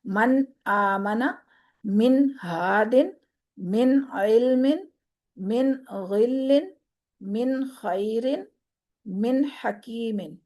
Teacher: نون کی آواز کو ظاہر کرنا ہے، لیکن ایک چیز یہاں پر نوٹ کرنی ہے کہ من نہیں کرنا، من آمنا نہیں کرنا، یعنی نون کو چھوڑنا نہیں ہے، کلکلا ہو جائے گا